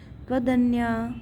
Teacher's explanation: संधि हो गई है त को द हो गया है